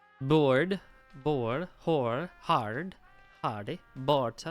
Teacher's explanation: The combination of R and D is not pronounced as two distinct sounds, rather like a thick D. Move your D to the position of R.